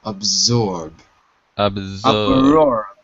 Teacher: Remember, the S is like a Z, like a zebra.